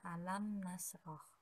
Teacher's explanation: huruf mim sukun bertemu dengan huruf nun maka cara membacanya yaitu jelas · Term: idhar syafawi